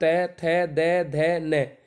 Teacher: ऊपर के दांतों पर जीभ लगने से होता है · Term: दंतीय